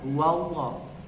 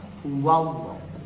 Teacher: lam pada kata Allah dibaca tebal atau tafkhim kalau sebelum kata Allah tanda bacanya a.